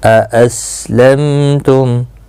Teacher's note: میم ساکن کے بعد تا آیا ہے، اظہار شفوی ہوگا، گناہ کے ساتھ نہیں پڑھیں گے۔